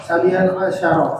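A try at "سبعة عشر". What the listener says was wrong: Nggak pakai nun. Sabi'a asyara.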